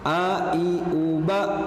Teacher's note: huruf A tipis, tidak boleh tebal. Jangan O, A, terbuka mulutnya, A.